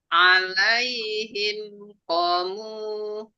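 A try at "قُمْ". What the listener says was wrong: Ko-nya ketinggalan 2 harokat.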